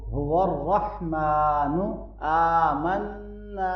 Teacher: کھڑی زبر کو اور الف مدہ کو لمبا پڑھیں گے اور نون مشدد پہ غنہ ہوگا